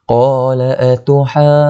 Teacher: Huruf mat bertemu dengan huruf jim yang bertanda syaddah. Tu jadi mad lazim kalimah muthaqqal. Kena dengung panjang 6 harakat.